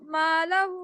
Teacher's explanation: मालहू, 4 count जितना stretch करेंगे